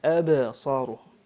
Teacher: شوف القلقلة فيها أو الباء الساكنة فيها صفة القلقلة.